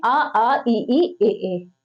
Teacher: आवृत्तमुखी जिसमें ओठ गोल मत बने